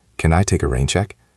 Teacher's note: Try to make it sound like a question with your voice going up a little at the end.